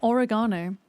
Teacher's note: So on the ga is where the accent is. Whereas for you it's ore you know, but it's also it's also the shape of the vowel that's different.